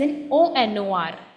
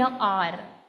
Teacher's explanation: the h in honor is silent, so we pronounce it, then the pronunciation starts with the vowel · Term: h is silent